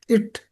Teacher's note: நாக்கோட நுனி அன்னத்தோட நுனியை தொடும்